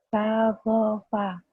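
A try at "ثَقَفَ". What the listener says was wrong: Bukan fa ya. Sagofa. Diulang.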